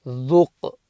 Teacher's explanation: the Qaf is a Qalqala letter, so you bounce it